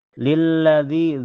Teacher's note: Jadi ditekan lilladzi matobi karena ada ya sukun sebelumnya harokat kasrah dibaca panjang 2 harokat